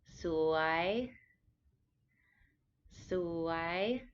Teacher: this is a rising tone so it's lower at first and it goes up like a question